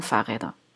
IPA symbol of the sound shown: d